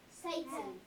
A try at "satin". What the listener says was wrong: Well, Satan, the words, the name Satan is spelled like this. So it's not that. Satin. Satin. So, satin is what kind of syllable over here? Open or closed? Closed, because it has this T on the end.